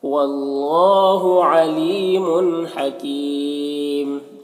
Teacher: اللہ کے لام کو پر پڑھیں گے. کھڑا زبر ہے، ایک الف کے برابر کھینچیں گے.